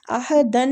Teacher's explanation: عہدن نون مشددہ غنہ کریں گے